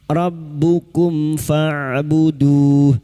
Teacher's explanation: mim sukun bertemu fa idhar syafawi, mim sukun dibaca jelas tanpa mendengung. Rabbukum fa'buduh, fa huruf ain sukun fa'buduh.